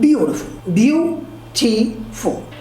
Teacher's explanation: there are 3 syllables in a word beautiful, beautiful, and the stress falls on the first syllable, beau. And please note that in this video, I'll demonstrate the stress in a word by capitalizing all the letters that make up the syllable.